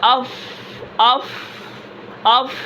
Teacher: آواز کے اندر پستی ہے، سانس جاری ہے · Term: ہمز